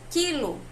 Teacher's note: nós também não pronunciamos o U, nós pronunciamos quilo, como se fosse apenas o som do Q e o som do I